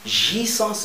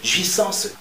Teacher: je dois nasaliser le A, jouissance, et je dois avaler le E